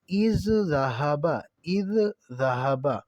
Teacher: جیسے اذ ذہبا، اذ ذہبا، تو اب اذ جو ہے یہ بھی ذال ہے، اور ذہبا آگے وہ بھی ذال ہے، یہ مخرج بھی دونوں کا ایک ہے، لفظ بھی دونوں ایک ہیں، تو یہ دونوں جب جمع ہو گئے ہیں ایک جگہ پہ، اور پہلا جو ہے وہ ساکن ہے، دوسرا متحرک ہے، تو یہ دونوں آپس میں مدغم ہو جائیں گے، تو اب اذ ذہبا کی بجائے اذ ذہبا پڑھا جائے گا اسے، تو یہ ہو گیا ادغام مثلین۔